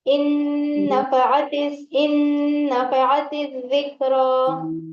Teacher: इन्ना नहीं पढ़ेंगे, इन हमजा नून जेर जी इन, और फिर नून के बाद फिर डबल से नून आ गए तो नून को नून से मिलाकर पढ़ेंगे ना, इदगाम हो रहा है यहाँ पर। और नून मुशद्दद है तो गुन्ना भी करेंगे